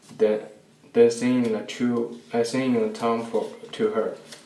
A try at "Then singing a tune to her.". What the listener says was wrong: So he says the D instead of a TH for then. He says din.